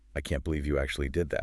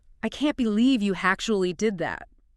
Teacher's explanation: Did you feel how your voice went way up on believe and then kind of slid down on actually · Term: the staircase, go up and then slide down